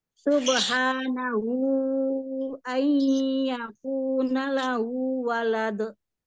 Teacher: Yang dua harokat itu hanya pada kata lahu. Tapi di kata subhanahu, di situ empat atau lima harokat. Lebih panjang itu ya.